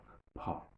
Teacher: Pa has got a h sound, a puff of air sound is also there. That is the voiced aspirated plosive pa.